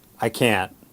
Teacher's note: how will you know it's negative intonation it goes down